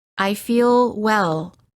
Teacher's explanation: Notice how the L is prolonged by keeping the tongue up longer. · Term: The American L